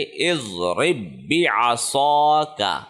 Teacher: یہ جو را ہے جس کے نیچے زیر ہے اس را کو اس تشدید والے با کے ساتھ کنیکٹ کرنا ہے، جزم والا با یہ سائلنٹ ہو جائے گا۔ اس کو ہم پڑھیں گے اضرب بعصاک، وف کی صورت میں اضرب بعصاک۔